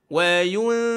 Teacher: Mulut lebar lepas tu dengung dia kat hidung. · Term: dengung sambil senyum